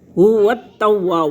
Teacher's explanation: واو کے ساتھ تا ملے گا، مشدد ہے، 1 دفعہ پیچھے ملے گا اور 1 دفعہ خود پڑھا جائے گا